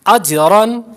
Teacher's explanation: اب اجرن پہ ہم دیکھیں جیم پر کلکلا کر رہے ہیں